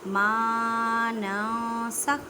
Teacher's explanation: अलिफ मद्दा का कायदा करें, मीन्स के एक अलिफ की मिकदार में खींच कर पढ़ें